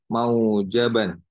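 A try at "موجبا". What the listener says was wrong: Mujaban bukan mau. Mu. Mujab.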